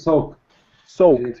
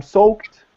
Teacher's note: So the ED is pronounced as a T.